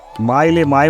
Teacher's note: मायले माय म्हणता ओठला ओठ भिडे